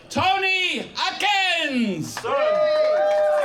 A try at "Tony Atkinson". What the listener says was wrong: Atkinson! I once had a teacher who insisted on Atkins, and it just does your head in, really. It's only one syllable, but I am a poet.